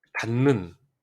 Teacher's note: 똑같이 디귿이 니은으로 바뀌었죠. 디귿, 파열음이죠? 니은은 비음이잖아요. 비음이 아닌 것이 비음으로 바뀌는 현상, 비음화.